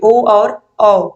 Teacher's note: आप इनको बोल के देखोगे तो जो आपके होंठ है वो गोल हो जाएंगे